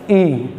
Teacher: ई आप बोले तो उसमें मुंह खोलने की जरूरत नहीं है, ठीक है। उसमें हल्का सा दबा देंगे तो आप ई बोल सकते हैं, ठीक है। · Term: संवृत